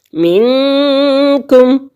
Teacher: نون ساکن کے بعد کاف حروف اخفا کے 15 حروف میں سے آ گیا تو یہاں پر بھی ہم غنہ کریں گے، اخفا کریں گے، دو حرکت کے برابر ناک میں آواز کو چھپائیں گے.